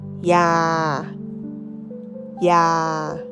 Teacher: Medicine we say ya ya with a high tone.